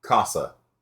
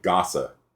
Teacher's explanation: you see with the K the air is coming out with the G it's not